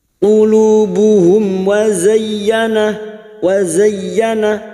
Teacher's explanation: mim sukun bertemu waw idhar syafawi, mim sukun dibaca jelas tanpa mendengung